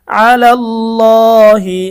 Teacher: এখানে খারা জবর থাকার কারণে এক আলিফ টান হবে